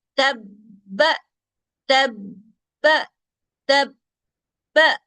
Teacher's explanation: آواز چلے گی نہیں، آواز بند ہوگی